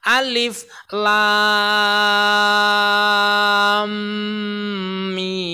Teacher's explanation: Beratnya ya diidghamkan. Caranya itu mengidghamkan huruf lamnya masuk ke huruf mim.